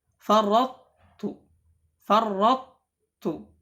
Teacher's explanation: tidak dileburkan di idgham kamil, tidak ke huruf ta, tidak, ya, melainkan ada sifat mutbaqnya yang masih tersisa di huruf to.